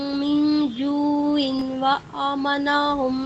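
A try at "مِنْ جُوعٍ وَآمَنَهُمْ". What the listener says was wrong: ٹھیک ہے، آپ نے ادغام کیا لیکن تھوڑا سا اور ٹائم دینا ہے جو عیوں و، ٹھیک ہے؟ عیوں کے بعد تھوڑا سا رکنا ہے غنہ کرتے ہوئے،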